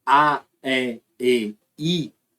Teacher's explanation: além de a língua ir pra frente ela vai subindo também · Porque se você reparar, quando você faz A, E, I, à medida que você vai fazendo A, E, I, além de a língua ir para frente, ela vai subindo também